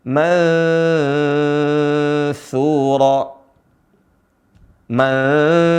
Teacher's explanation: Ya, ada nun mati bertemu dengan huruf sa. Nah, cara bacanya adalah nunnya tidak jelas atau samar suara nunnya. Tidak dibaca mansura.